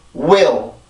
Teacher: 강세 음절의 시작이 W인데, 아까 전에 봤던 J라는 소리와 마찬가지로 전이음의 생명은 빠르고 짧은 거예요. 근데 이제 강세 음절이다 보니까 그 빠르기가 더 빠르고 힘이 더 들어가게 되는데, 이때는 어떻게 힘을 주게 되냐면 내가 입술을 모으고 있는 힘을 더 주면 돼요.